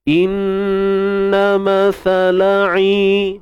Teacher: huruf ain tengah kerongkong, kita sempitkan i, kemudian mad panjang dua harakat. Sebab kat sini ada ya mad tuan-puan, dan sebelumnya berbaris bawah mad asli lah, MA.